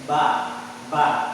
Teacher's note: Kemudian ada seperti ba, itu keluarnya dari bibir.